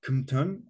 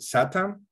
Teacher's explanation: these k sounds became sibilant